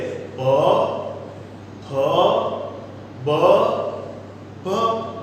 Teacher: તમારા મોઢાના હોઠ બંને અફળાય છે અને એક વિસ્ફોટ સાથે હવાને બહાર છોડે છે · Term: ઓષ્ઠ્ય વ્યંજન